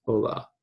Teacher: the h's do not have a sound they are silent